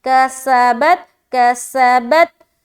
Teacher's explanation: سا میں سیٹی کی آواز ظاہر ہوگی